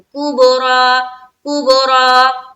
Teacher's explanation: با میں قلقلہ کرنا ہے، دھیان رہے با میں قلقلہ کریں گے